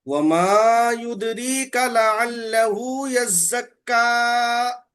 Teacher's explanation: یہ پہلی غلطی، کاف آپ و- کھینچ دیے۔ کاف متحرک ہے، کاف جی کو جلدی پڑھیں گے، کھینچیں گے نہیں۔